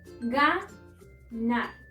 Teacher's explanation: Encontramos la sílaba tónica en nar, es decir, la última sílaba, pero al no cumplir con la regla ortográfica de terminar en n, s o vocal, no la podemos acentuar.